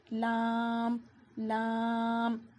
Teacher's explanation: لام کو ہم باریک پڑھیں گے اور ہمارے ہونٹ اسے اسپریڈ کر کر پڑھیں گے